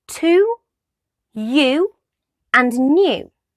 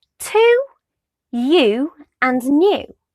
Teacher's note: the sound ooh is voiced and it's a closed back rounded vowel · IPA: /u:/